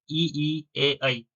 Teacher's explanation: जीवा के आगे वाले भाग से बोले जाने वाले स्वर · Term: अग्र स्वर